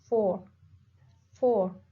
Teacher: voiceless labiodental fricative as F in 4